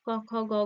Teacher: জীব পশ্চাতে গিয়ে সেখানে কণ্ঠের সঙ্গে স্পর্শ করছে তাই সেটা কি ছিল কণ্ঠধ্বনি